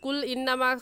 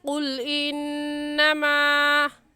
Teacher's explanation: قاف موٹے حروف میں سے ہے، موٹا کر کے پڑھیں گے، قاف کی جگہ کاف نہیں پڑھیں گے۔